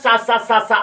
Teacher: उच्चारण में मुख से निकलने वाली वायु को संघर्ष करना पड़ता है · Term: संघर्षी व्यंजन